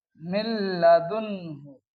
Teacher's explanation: इदगाम होगा लेकिन गुन्ने के साथ नहीं होगा, इसी को कहते हैं इदगाम बिला गुन्ना